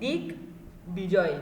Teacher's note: দিগ্বিজয় একটি সন্ধিজাত শব্দ। বলা হচ্ছে সন্ধিজাত শব্দে যুক্ত বফলায় বয়ের উচ্চারণ বজায় থাকবে